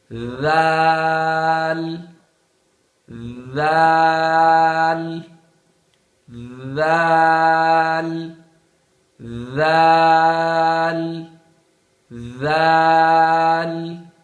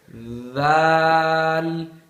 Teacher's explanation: زبان کی نوک اوپر والے اور نیچے والے دانتوں کے درمیان میں لے آئے